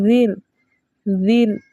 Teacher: साकिन हर्फ की आवाज़ इसके मखरज में रुक जाती है। रॉ साकिन से पहले ज़ेर है, इसलिए इस रॉ को हम बारीक पढ़ेंगे